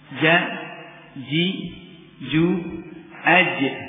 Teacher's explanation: wasatul lisan dari bagian tengah lidah keluar Jim syin dan ya